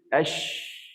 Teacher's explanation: huruf rakhawah, suara yang mengekor tu lebih panjang sikit.